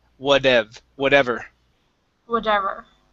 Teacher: flip this T to a flap T